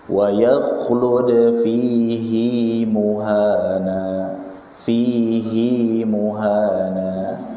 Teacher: hi-nya dibaca panjang 2 harokat